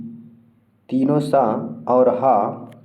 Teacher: जो तीनों स और ह होते हैं वह संघर्षी कहलाते हैं